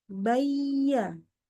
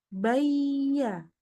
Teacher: suaranya mengalir tidak ada berhentinya